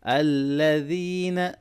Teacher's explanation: جب بھی کوئی آیت، کوئی ورڈ الف اور لام سے شروع ہوتی ہے تو وہاں پر آٹومیٹکلی زبر آ جائے گا، ٹھیک ہے۔ الذین، ذال کو نرمی سے پڑھیں گے، یا مدہ ہے اس کو لونگ کریں گے